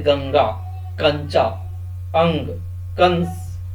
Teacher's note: अनुस्वार इनका उच्चारण करते समय नाक से ध्वनि निकलती है जैसे गंगा कंचा अंग कंस आदि ठीक है अनुनासिक इसका उच्चारण